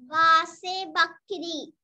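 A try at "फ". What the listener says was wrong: Mane not ba. Pa only. Fa, fa also we can say. Correct pronunciation is pa. Phal, phool, phavara, phavada, phasal.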